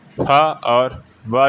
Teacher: दंत और ओष्ठ से बोले जाने वाले वर्ण है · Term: दंतोष्ठ